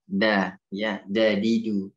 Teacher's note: Dal di mana ujung lidah mengarah ke pangkal gigi seri atas